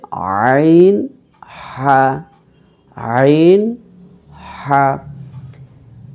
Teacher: 2 নম্বর মাখরাজ হলকের মধ্যখান হইতে